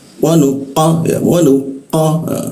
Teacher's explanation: lidahnya diangkat, rongga udara terkunci, tidak ada hembusan udara